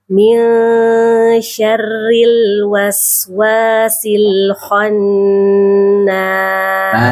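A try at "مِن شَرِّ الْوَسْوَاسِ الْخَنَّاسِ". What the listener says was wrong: Ibu tadi kho-nya kurang. Bukan khan, bukan kha. Kho. Kho, coba. Khon. Coba kho.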